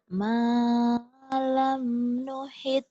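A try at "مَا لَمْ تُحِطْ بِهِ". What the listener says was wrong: Malam biasa aja. Jangan ada cengkok ngegeter. Malam tuhit, jangan ada gitu.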